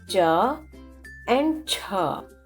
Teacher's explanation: pronounced using hard palate which is the bony region at the top of the mouth